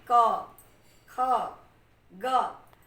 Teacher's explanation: आपके कंठ के पास थोड़ा सा घर्षण हो रहा होगा, उसी से स्पष्ट हो जाएगा कि इनका उच्चारण स्थान कंठ है।